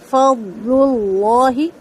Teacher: ضاد کو جتنی زیادہ اسٹرانگلی ہولڈ کر سکتے ہیں اتنی زیادہ ہولڈ کر کے پھر لام کی طرف جانا ہے